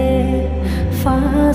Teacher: ফায়ের মাখরাজ নিচের ঠোঁটের পেট উপরের দাঁতের আগা লাগিয়ে